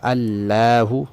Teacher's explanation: یہ لفظ اللہ کا لام موٹا کرنا تھا، اس کو باریک کر دیا